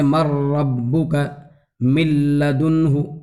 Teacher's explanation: نون جو ہے بالکل لام سے بدل جاتا ہے ، اس کو کہا جاتا ہے ادغام بلا غنہ۔ اور من